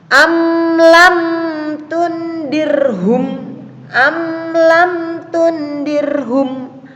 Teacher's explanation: maka dibaca dengan idhar safawi atau jelas di bibir